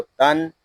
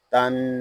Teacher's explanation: یہاں نون میں شدد ہے، اس کو غننے کے ساتھ پڑھیں گے